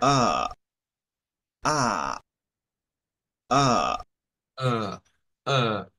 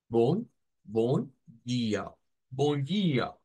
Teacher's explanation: Es una A que es como retrocedida.